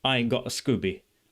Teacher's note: because of the glottal stops, it feels British to me. It feels like Cockney to me.